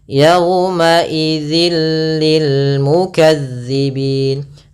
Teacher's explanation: suara tanwinnya masuk ke huruf lam dan nunnya, suara nunnya hilang. Awalnya yauma idzin ketemu lam langsung ke lam, jadi mengganti l. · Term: Idgham bila gunnah